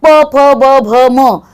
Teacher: प फ ब भ म या सगळ्याच अक्षरांना ओठ चिकटतात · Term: ओष्ठ